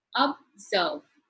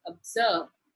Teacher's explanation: Two syllable. It is in the second syllable that the stress is given, that is observe.